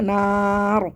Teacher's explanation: را کا سکون عارضی، تو یہاں پہ 6 الف برابر کھینچ کے پڑھیں گے